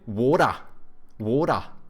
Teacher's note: they take like the soft D's from Americans, but they don't pronounce R's. They also say a schwa like the Brits.